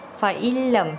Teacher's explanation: tak perlu dibaca dengung tetapi dimasukkan huruf nun sakinah ke dalam huruf lam